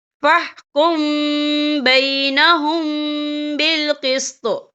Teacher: میم ساکن کے بعد جو ہے با آ رہا ہے، تو یہاں پر اکفا شفی ہوگا اور ہم یہاں غنہ بھی کریں گے